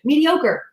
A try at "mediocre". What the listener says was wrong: Because you're making it 2 words. It's not a mediocre.